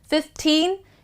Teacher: whenever the number ends with teen, the focus would be at the last part, 15. So its focus is on teen.